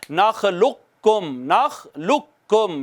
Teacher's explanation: یہ تھا نخلقکم، پہلا قاف ساکن تھا دوسرا متحرک تھا، تو اس قاف کو اس قاف میں مدغم کر دیا تو لام ڈائریکٹ اگلے قاف سے پڑھا جائے گا، اور اس کو کہیں گے نخلقکم، نخلقکم، نخلقکم نہیں کہیں گے چونکہ پہلے حرف کو دوسرے میں ضم کر دیا گیا ہے۔